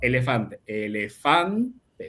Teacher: Fan es la sílaba tónica. Elefante, la sílaba pretónica, que es la anterior a la tónica.